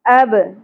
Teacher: با ساکن پہ قلقلہ ہوگا